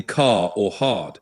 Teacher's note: British English tends to be non-rotic, meaning we often drop the R sound at the end of words or before consonants like in car or hard.